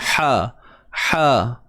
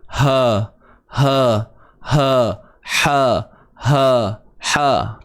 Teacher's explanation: Kita macam menyempitkan di bahagian kerongkong kita ni. Ha, ha. Kalau tak sempit, ha, ha, ha, ha, ha, ha.